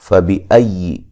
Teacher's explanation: حمزہ کو یا سے سختی سے ملائیں گے، لیکن یا کو نرم ادا کرنا ہے